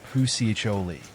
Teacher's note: The emphasis is on the CHO syllable, and the li at the end is pronounced as li.